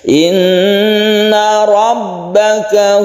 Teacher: Inna guna musyaddadah lagi, roknya rok tebal atau tafkhim karena berharakat fathah